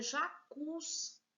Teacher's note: Veja, o cus, ele é mais forte. A última sílaba, se é a última, ela é oxítona.